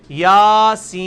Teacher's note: سین کو آپ 5 سے 6 الف لے کے جائیں گے